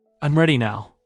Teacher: Voice settles downward on now. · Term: falling inonation